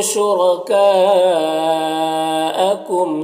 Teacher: کاف میں مد متصل ہے، اسے 3 4 الف کے برابر کھینچ کر پڑھتے ہیں